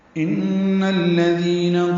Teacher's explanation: ان میں نون مشدد ہے، غنہ ہوگا، آواز ناک کے ماسے میں لے جائیں گے، دو حرکات تک ٹھہرائیں گے